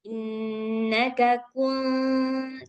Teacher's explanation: ikhfanya tipis, tipis, hurufnya tipis, jadi dengungnya juga harus tipis. Tetapi ketika membunyikan kunya itu harus benar-benar dhammah.